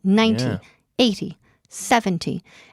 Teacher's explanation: On 90, it falls on the first syllable. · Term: accent